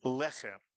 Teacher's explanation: Normally in Hebrew, the accent is on the le syllable, but when you have a Hebrew word with 2 segols in it, 2 in a row, the word tends to be accented on the first syllable.